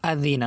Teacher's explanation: জাল নরম করে বলতে হবে, জিহ্বার মাথা উপরে দাঁতের মাথার সাথে লাগিয়ে